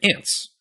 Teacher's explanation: There's an unvoiced T and an unvoiced S together.